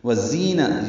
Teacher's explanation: زا تیز صفیر کی آواز سے ادا کریں گے